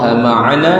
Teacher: Ma'ana dua harakat, bukan mad arid disukun tu.